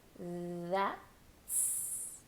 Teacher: start with the voiced TH or a D sound if you want to. That's. Very, very soft T with an S.